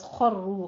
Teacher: خوا بھی پر ہے، اور را بھی یہاں پہ مفخم ہوگی، را کو بھی پر پڑھنا ہے